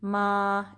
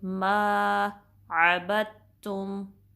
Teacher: माँ को 2 count stretch करेंगे और माँ की साउंड जो है नाक में न जाए।